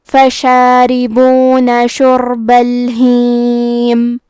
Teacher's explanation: کلمت شربہ میں حرف را پہ جزم ہے، یہاں را کا حکم ہے تفخیم، تو ہم یہ حرف کو موٹی آواز میں پڑھیں گے